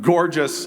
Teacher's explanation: it's trochaic so it starts with a hard stress syllable and then it falls off in a tail